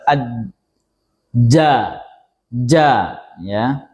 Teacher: istifal pangkal lidah turun ke bawah. Ketika misalnya kita ucapkan aj ja turun ke bawah melafalkannya sehingga suara yang dihasilkan tipis.